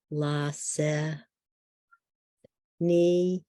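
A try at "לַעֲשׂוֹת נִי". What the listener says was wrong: Lasech di V, Lasech V, it's a Vav.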